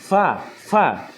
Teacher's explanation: Fa keluar dari bibir bagian dalam bertemu dengan ujung gigi atas. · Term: Huruf fa